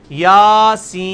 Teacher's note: کھڑی زبر. یاسین، سین کو آپ 5 سے 6 الف لے کے جائیں گے